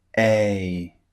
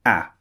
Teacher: So the first thing I'd like you to notice with these two sounds is the difference in length. A is the first sound. It's quite long. A. And the second sound, A, is very, very short. It comes out in a very short burst.